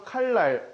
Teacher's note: 그냥 니은이 리을 만나면 앞에서 만나든 뒤에서 만나든 유음이 됩니다. 이게 다예요, 유음화. · 같은 울림소리 중 하나인 니은이 리을로 바뀌어주는 현상, 그것을 유음화라고 합니다.